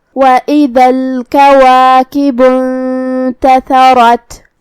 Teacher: تا کی ادائیگی زبان کے سر اور اوپر والے دانتوں کے اندرونی کناروں سے ہے تو ہمیں تا کو وہیں سے پڑھنا ہے.